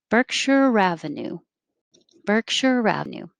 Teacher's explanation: r from berkshire will connect to the a